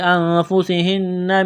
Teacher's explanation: نون مشدد پر غنہ کریں گے، آواز ناک میں چھپائیں گے۔ نون ساکن کے بعد میم مشدد ہے تو نون کا میم میں ادغام کریں گے غنے کے ساتھ۔